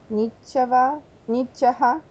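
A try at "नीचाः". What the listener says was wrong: Ну да, это ха, это а после висарги, буквально чуть-чуть. Это полслога, а вы его повторяете так, что мне уже...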